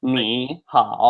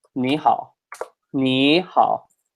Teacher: your ni becomes a second tone